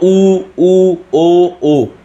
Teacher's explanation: ऊ ओ बोलने के होठ की गोलाई के अनुसार इसको हम लोग कहते हैं वृत्त स्वर, जो वृत्त बन जाता है, इस तरह से मुंह का वृत्त बन जाता है, गोल बन जाता है मुंह, तो वो ऊ ओ, ठीक है।